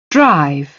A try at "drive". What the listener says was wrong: It's drive, right? So he was like that R was stressed a bit more, so you can reduce that R stress.